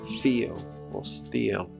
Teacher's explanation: if there is an /i:/ sound that is followed by a closed /l/ sound, a quick /j/ is inserted between the two sounds